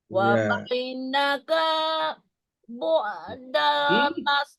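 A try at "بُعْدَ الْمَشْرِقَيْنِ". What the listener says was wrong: Kalau dibaca wa bainaka bu, itu kapnya ada alif, ini kan nggak ada.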